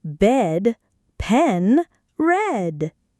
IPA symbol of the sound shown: e